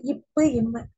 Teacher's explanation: மேல் இதழும் கீழ் இதழும் பொருந்துவதால் பிறக்கக்கூடிய எழுத்து